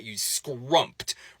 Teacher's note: in going from an M to a T, some people find it easier or more natural to insert a P sound as you release your lips along the way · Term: extra P